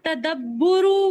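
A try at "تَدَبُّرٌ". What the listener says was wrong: तदब्बुरुन लगा लें। ये ले आप, इन सब की ये मसादिर हैं, इसके ऊपर ये तनवीन लगा नहीं नहीं नहीं सिस्टर, तदब्बुरू नहीं है, तदब्बुरुन तदारुसुन इनकिलाबुन, ये पढ़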